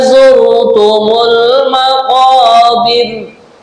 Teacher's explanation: cara membaca ro yang tipis atau tarkik, nah, Ini kedua ujung lidah ini ditarik kayak orang senyum itu